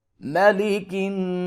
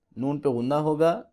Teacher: نون پہ غنہ ہوگا، ناک سے آواز کو نکالیں گے، نون مشدد جہاں بھی قرآن پاک میں آ جائے وہاں پہ ہم غنہ کریں گے۔